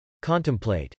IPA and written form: kˈɑntəmpl.eɪt (contemplate)